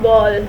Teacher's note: We have discussed earlier that Ba is a bilabial stop because in its pronunciation lips are brought together and air stream is obstructed and then released with sudden explosion.